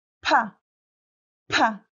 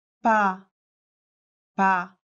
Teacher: put a paper in front of your mouth and say pa, pa. The paper flutters. How about ba, ba? Nothing happened.